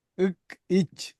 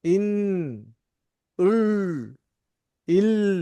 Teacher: முழுமையாக தடைபட்டு ஒருமித்து வாயினூடாக காற்று வெளியேறும் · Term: வல்லினம்